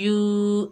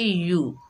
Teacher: को पढ़ते वक्त 3 बातों का ख्याल रखते हैं, एक तो इसे खींचेंगे नहीं यू, दूसरा झटका नहीं देंगे यू, तीसरा मजहूल नहीं पढ़ेंगे यो, इसे बगैर खींचे पढ़ेंगे